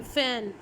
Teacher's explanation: और passive articulator क्या है, अपर इंसाइजर टीथ। अपर इंसाइजर्स पर मैं अपना लोअर लिप ले जाकर लगाती हूँ तो मैं बनाती हूँ लेबियो डेंटल साउंड